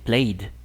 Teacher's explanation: el último sonido de play es una vocal, i. Entonces esto va a sonar como d también.